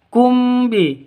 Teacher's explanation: mim mati bertemu dengan ba. Cara bacanya dengung. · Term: ikhfa safawi